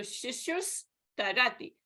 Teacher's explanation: the Visarga is preceded by U, followed by Ta. Visarga changes into Sa.